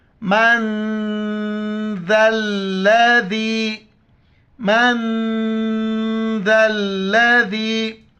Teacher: ذال کے وقت زبان باہر نکالیں گے اور لام کے ساتھ ملائیں گے، اور اس ذال کو یا کے ساتھ.